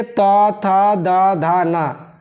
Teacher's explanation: इनका उच्चारण स्थान कहाँ से है? दांत से है। इनको बोला जाता है, इनका नाम जो दिया गया है, दंत वर्ण।